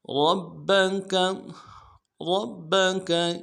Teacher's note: را کو موٹا ادا کرنا ہے، با کے ساتھ ملائیں گے، با کے اوپر تشدید زور دیں گے، اگلے با کو نرم سے ادا کریں گے، کاف کو نرم سے ادا کریں گے.